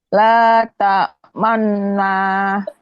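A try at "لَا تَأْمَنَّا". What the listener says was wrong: Hilang monyongnya. Dimanyun, manyun, Manu, manu.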